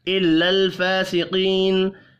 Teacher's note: لام ساکن ہے, قلقلہ نہیں کرنا · کھڑی زبر کو اور یا مدہ کو ایک الف کے برابر کھینچ کر پڑھنا ہے.